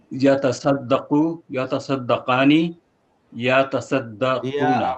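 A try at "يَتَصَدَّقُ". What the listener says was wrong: আবার ইয়া করে টান হবে না, ইয়া দ্রুত ইয়াতা ইয়াতা ইয়াতা বলুন তো কয়েকবার। ইয়াতা ইয়াতা ইয়াতা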